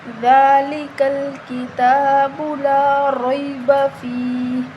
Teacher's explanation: دال کو نرم پڑھیں گے، دال کے اوپر جو کھڑی زبر ہے اس کو ہم 1 الف کے برابر لمبا کریں گے